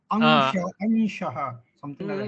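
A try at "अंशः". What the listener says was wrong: No. That there is a little more nasal there than Makara. That's the important thing. But in South, we are a little bit more like Makaras.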